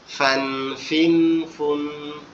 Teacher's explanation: উপরে দুই দাঁত, নিচে ঠোঁটের পেটের সাথে লাগবে, লেগে উচ্চারিত হবে